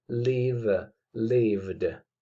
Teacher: el sonido v, si yo pongo mi dedo índice y corazón en mi garganta, al pronunciarlo, me daré cuenta de que la garganta está vibrando, hay una vibración en mi garganta. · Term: sonido sonoro